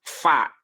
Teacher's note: Tapi cara melafalkannya itu tidak menempelkan bibir atas dan bibir bawah, tidak. Tapi bibir bawah ditempelkan ke gigi seri atas. Fa itu masih syafatain, ya.